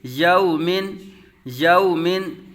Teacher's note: یا متحرک واو ساکن سے پہلے زبر واو لین ہوگا بغیر کھینچے بغیر جھٹکا دیے